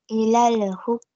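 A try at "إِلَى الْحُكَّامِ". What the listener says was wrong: Jangan ilal hukami. Ya, jangan terlalu panjang. Jangan dimainkan di situ. Ilal hukka. Ya, sebentar saja, 2 harokat saja.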